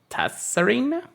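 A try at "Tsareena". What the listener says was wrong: Serena. I've always said the T is what's it called? Silent.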